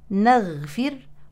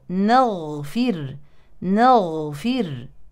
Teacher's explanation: النون مرققه نعم اما الغين مفخمه اذا لا نقول نغفر ولكن نغ نغفر نغفر نغفر نغفر انتبهوا